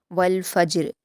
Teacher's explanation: वल फ़ज्र में जीम पर क़लक़ला किया जाएगा